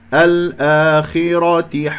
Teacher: هنا الآخرة مد بدل حركتين، ألف ساكن قبل همزة مفتوحة، الخاء مفخمة مرتبة أخيرة خامسة لأنها مكسورة، والراء مفخمة لأنها مفتوحة، فننتبه إليها.